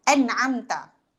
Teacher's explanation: Nun bertemu ain sepatutnya hukum dia jelas. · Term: izhar